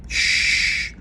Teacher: we can't make this sh sound with our voice